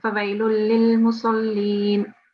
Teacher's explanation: Okay, so because we have a lam mushaddad here, but the tanween will not be pronounced with the ghunna sound, so it's a straight sound.